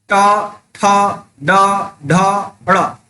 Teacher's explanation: तो जब भी टा, ठा, ड, ढ, ड़ बोलते हैं तो हम क्या पाते हैं, हमारा जीभ जो है थोड़ा मुड़ जाता है।